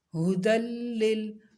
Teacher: اب یہ یا خالی ہے تو اس لیے یا کو چھوڑ دیں گے، یا کو نہیں پڑھیں گے، دال کو لام کے ساتھ ملا کے پڑھیں گے. ہدل لل، لام کو ہلانا نہیں ہے، لمبا بھی نہیں کرنا